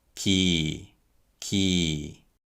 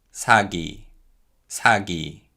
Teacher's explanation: when 기역, 디귿, 비읍, and 치읓 are used in word initial syllables, they are pronounced as voiceless, lightly aspirated sounds. But when they come after voice sounds, they become voiced G, D, B, and J sounds